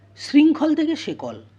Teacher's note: শব্দের অন্তর্গত নাসিক্য ব্যঞ্জন লোভ পেল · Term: বিনাসিকী ভবন, বিনাসিক্যী ভবন